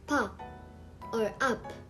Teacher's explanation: in the syllable or the second one p pronounced as P similar to the English P but more aspirated